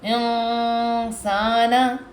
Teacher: Voice کو کیا کرنا ہے؟ ناک کے اندر لے کے جانا ہے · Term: اخفا غنہ